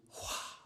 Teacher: the word is made up completely of aspirants and vowels, and thus the actual pronunciation is Hua, like the sound of the wind